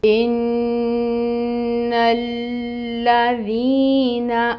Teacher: حمزہ محقق ادا کریں گے، نیچے کسروں کی حرکت ہے جس کو 1 کاؤنٹ پڑھیں گے۔ نون مشدد ہے، غنہ ہوگا 2 کاؤنٹس۔ لام پہ تشدید ہے، اس نون کو لام کے ساتھ ٹائٹلی جوائن کریں گے، ٹائم ٹیکنگ ہوگا۔